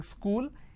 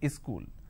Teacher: wherever there is a word that starts with the sir sound they add a e in front so instead of saying school they say is cool